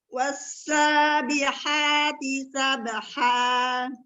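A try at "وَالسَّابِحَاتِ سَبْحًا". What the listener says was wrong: Ya, wawnya jangan pas start, wawnya jangan terlalu nutup, agak longgarkan lagi. Wasa, biar lembut.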